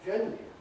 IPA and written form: ˈʤenr̩li (generally)